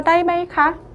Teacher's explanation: 그렇기 때문에 요즘은요, 마이를요, 음절을 읽는 방식에 따라서 발화를 하지 않고 아주 간단하고 좀 더 세련되게, 그리고 좀 더 성조의 다이를 함께 좀 간결하게 흐름을 매끄럽게 하기 위해서 다이메이카 단음의 삼성으로 발화를 하게 됩니다. 그래서 다이메이카 매끄럽게 이성으로 올려주시고 바로 삼성으로 이제 마무리를 지어주시면 돼요.